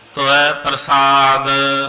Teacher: ਤਤੇ ਔਂਕੜ ਐੜੇ ਦੁਲਾਵਾਂ ਸੂਖਮ ਰੂਪ ਦੇ ਵਿੱਚ ਬੋਲਣੀਆਂ ਹਨ